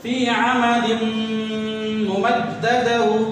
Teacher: آواز کو ناک میں لے جائیں گے، دونوں ہونٹ بند کر لیں گے اور گننا کریں گے